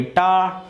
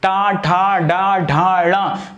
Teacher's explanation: देखिए टा वर्ग जरा आप बोलिए, टा, जी पीछे की तरफ मुड़ रही है, टा, ठा, डा, ढा, णा। अरे भाई पीछे, जीभ पीछे की तरफ, ऐसे सांप के जैसे आकार की बन रही होगी आपकी जीभ, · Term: मूर्धा वर्ण